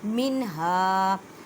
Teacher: نون ساکن کے بعد ہا ہے تو اظہار کریں۔ اظہار کا مطلب ہے ظاہر کرنا۔